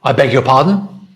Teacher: If the voice comes down, I beg your pardon? That's weird. It sounds very aggressive. It sounds very unfriendly.